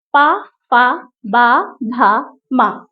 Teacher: ये हमारे होठों से टच करके बाहर निकल रही है हवा। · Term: ओष्ठ